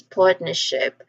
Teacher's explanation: So um usually um this word partnership it tends to be said as partnership. So the letter R sound in part is removed. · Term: nonrotic